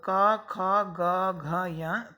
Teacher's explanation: ध्वनि करते समय हमारे कंठ पर जोर पड़ता है। कंठ पे जब हम हाथ रखेंगे, इनका उच्चारण स्थान बोलेंगे तो क, ख, ग, घ, या, तो सुनाई देगा हमें, यहाँ जोर पड़ेगा कंठ पर, तो ये कहलाएंगे कंठ वर्ण, यानी इनका उच्चारण स्थान कंठ है।